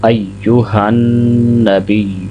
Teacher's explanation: ہا کو نون کے ساتھ ملاتے ہوئے ناک میں آواز جانی چاہیے، غنہ ہونا چاہیے